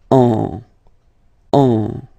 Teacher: you will get what we call a nasal. So it goes in your nose, and then you get the sound N.